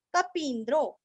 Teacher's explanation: कपि का पी दीर्घ आधा न और द्रो